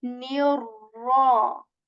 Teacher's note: What do I mean by heavy again is that you are supposed to raise the back part of your tongue when saying raw, and there is this rolling sound in raw. You're not supposed to over this raw sound, okay?